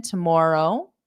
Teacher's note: I could do a slight Rising intonation because it's a yes no question